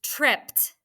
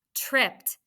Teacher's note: double the consonant and put a star up above it and i attach the vowel suffix e d which happens to sound like t